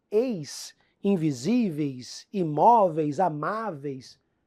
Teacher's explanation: Detalhe importante, esse ditongo aí, eis, invisíveis, imóveis, amáveis, ditongo decrescente.